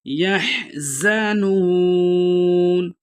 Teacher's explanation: ولا ہم یحزنون، یحزنون، یا کو حا کے ساتھ ملا کے پڑھیں گے، زا کو سیٹی سے ادا کریں گے، یعنی جس طرح سیٹی کی آواز آتی ہے اس طرح ادا کریں گے۔ یحزنون، واو مدہ ہے، ایک الف کی مقدار کھینچ کے پڑھیں گے۔ آیت ختم ہو رہی ہے، وقف کی صورت میں 4 سے 6 حرکات کھینچ کے پڑھ سکتے ہیں۔